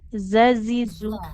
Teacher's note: jadi kalau zai dia ujung lidahnya menempel ke ujung gigi seri bawah. Kayak huruf sin makhrajnya. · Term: huruf zai